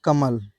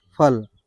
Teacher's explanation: कमल को कहने से कहीं पे गले में कोई भी कंपन फील नहीं हो रहा है। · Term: अघोष वर्ण